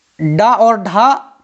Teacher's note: मूर्धन्य व्यंजन बोलते समय जीभ पीछे की ओर मुड़कर तालु को छूती है